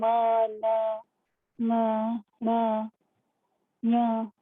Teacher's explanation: ये नाक से बोले जाते हैं और मुंह से भी बोले जाते हैं, क्योंकि आवाज मुंह से ही निकल रही है, लेकिन इनमें नाक का यूज होता है। · मुंह और नाक से एक साथ बोले जाने वर्ड है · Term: अनुनासिक, अनुनासिका